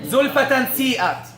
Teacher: Where is my tongue? It's resting at the lower incisors. Where are the teeth? They're coming close. Is there long ghunna? Yes. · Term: ikhfa